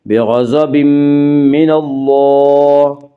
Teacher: اللہ کے لام سے پہلے نون کے اوپر زبر اس لیے اللہ کا لام پر پڑا جائے گا